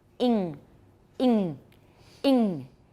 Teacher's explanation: you've got your tongue tip on your alveolar Ridge but you've also got the back of your tongue on your soft palate so it's in and I hear both and I go no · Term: double articulation